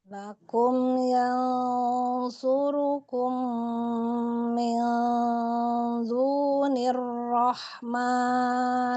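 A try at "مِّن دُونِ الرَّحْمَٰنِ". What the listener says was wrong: Tidakkan lagi dalnya kayak tadi. Mindu.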